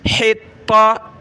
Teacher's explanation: تا کو ہم نے سخت کرنا ہے تشدید کی وجہ سے، ہا کو گلے سے نکالنا ہے